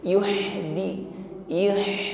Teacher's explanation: Hames ada nafas yang mengalir di situ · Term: huruf ha